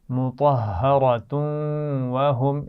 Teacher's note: مطہرۃن, را کو موٹا پڑھیں گے, اور مطہرۃن وہم, تنوین کے بعد واو ہے تو ملا کر بھی پڑھا جاتا ہے اور یہاں پر غنہ بھی کیا جاتا ہے